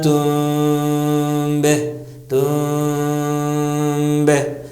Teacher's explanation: ہونٹوں سے ادا ہوتا ہے میم, تو پورا ہونٹ کس کے دبانا نہیں ہے بلکہ ہلکا سا قریب کر کے میم کو کھینچتے ہوئے ادا کرنا ہے. تم بہ, تم بہ, جتنا کم ملا پائیے اتنا بہتر ہے. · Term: اخفا